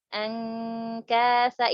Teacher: Contoh yang qalabu angkasa, itu pun ikhfanya pun suaranya mendekati izhar ya kan, ditempelkan lidahnya ke langit-langit, pangkal lidahnya ditempelin ke langit-langit, bunyinya pun mendekati izhar, mendekati suara nun. Karena berjauhan tadi, karena nun dengan qaf sama nun dengan kaf itu berjauhan, jadi suara ikhfanya pun cukup jelas ya, cukup jelas mendekati izhar.